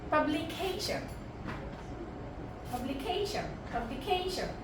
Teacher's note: কে এর কাছাকাছি, কে এর ঠিক আগে এখানে একটা স্ট্রেস দিচ্ছি, পাবলিকেশন, পাবলিকেশন, নট এভাবে না, পাবলিকেশন এভাবে না, পাবলিকেশন, ওখানে গিয়ে কেটাকে আমি একটু তুলে দিচ্ছি এবং শব্দটা তখন আরো বেশি প্রফেশনাল।